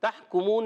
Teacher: تحکمون، تا کو ہا سے ملانا، ہا حلق کے درمیان والے حصے سے، تحکمون میں کاف کو باریک رکھنا ہے